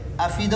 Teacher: اس حمزہ کی حرکت کو نقل کر کے ماقبل فا کو دے دیتے ہیں اور حمزہ کو حذف کر دیتے ہیں